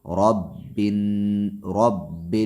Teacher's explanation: اعوذ اعوذ برب، برب با کو نہیں کھینچیں گے، را کو موٹا پڑھیں گے اس لیے کہ را پہ زبر ہے